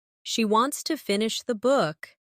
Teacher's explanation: Stress wants and book.